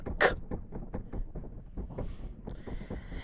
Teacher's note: So the K sound, that is an unvoiced velar plosive. Unvoiced meaning that the vocal cords don't vibrate to make the sound.